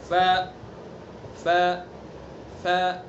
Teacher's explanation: ثنا علیہ کا کنارہ اور نیچے کا ہونٹ کا تری والا حصہ. ثنا علیہ جو اوپر والے ان کے کنارے نیچے کے جو نیچے کا ہونٹ ہے اس کے تر والے حصے پر لگائیں گے، جو تر والا حصہ. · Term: فا